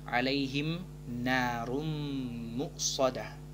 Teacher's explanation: langsung memasukkan ke huruf mim dengan dengung dua harakat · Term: Idgham Bighunnah